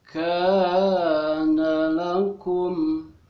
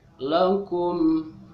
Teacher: itu mim mati bertemu fa namanya idhar safawi, jadi si mimnya dibaca jelas. Lakum, begitu ya, jangan ditahan atau jangan dipanjangkan mimnya, jadi cukup dijelaskan saja.